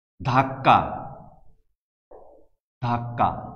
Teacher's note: যেমন ক এবং ক বললাম, ধাক্কা ধাক্কা, অর্থাৎ ক নামক যে ব্যঞ্জন ধ্বনিটি, যে এই ব্যঞ্জন ধ্বনিটি এখানে দুইবার ব্যবহৃত হয়েছে এবং সেইভাবে এর ক এর দ্বিত্ব উচ্চারণ হয়েছে